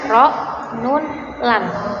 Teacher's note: makhraj huruf yang terdapat dalam ujung lidah, yaitu ro, nun, lam.